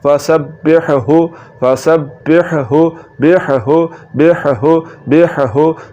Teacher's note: पहली हा और दूसरी हा इन दोनों हाओ को आपस में नहीं मिलाना तो इनमें इगाम नहीं होगा इसी तरह ये आ गया ला